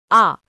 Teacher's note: বিবৃত স্বরধ্বনি আ ঠোট বেশি খোলা থাকে